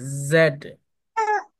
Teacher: জেড এটা হচ্ছে জেড জেড না জেড জেড সাউন্ড কয়ে গেল জেড বলার সময় মুখের মধ্যে একটা কম্পন হবে